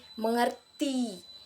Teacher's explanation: Misalnya dalam kata mengerti, penekanan diletakkan pada suku kata ti